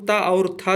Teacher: ता और था जो है ये दंत व्यंजन है